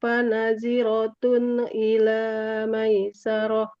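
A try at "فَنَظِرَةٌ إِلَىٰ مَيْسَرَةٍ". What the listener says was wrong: Fanadhi, huruf dha-nya lebih tebal Ibu. Fanadhiratun, fanadhiratun ila maisarah. Dho, dho. Fanadhiratun.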